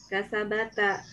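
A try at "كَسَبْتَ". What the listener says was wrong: Ba-nya sukun. Kasabta. Jadi, anta, antum, ana, nahnu, ba-nya atau huruf terakhirnya sukun.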